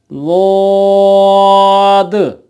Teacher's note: ज़ुबान की दाईं या बाईं साइड वो जगह जो ऊपर के दाढ़ों को लगती है, जब उनकी जड़ों को लगे तो पढ़ा जाएगा ज़ाद।